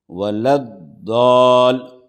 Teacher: جب بھی جزم یا تشدید ہوگا تو مد لازم ہوگا، یعنی اس حرف کو کھینچ کر پڑھیں گے، اس مد کو جو ہے کھینچیں گے، 5 الف کے برابر اس کو کھینچ کر پڑھیں گے